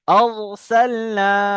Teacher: দেখতে পাচ্ছেন কেমন মোটা করে পড়ছি পুর করে · র সাকিনের পূর্বে জবর এসছে র, পুর হবে।